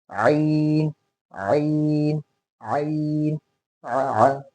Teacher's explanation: जो आ निकल रहा है यहाँ से, बिल्कुल हलक़ के बीच के हिस्से से ही शुरू करना है